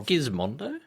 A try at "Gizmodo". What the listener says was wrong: It's not. It's always Gizmodo. He always puts the N in.